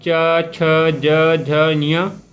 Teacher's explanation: जीभ जो है तालु को स्पर्श करती है जिससे कि ध्वनि उत्पन्न होती है। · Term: तालव्य वर्ण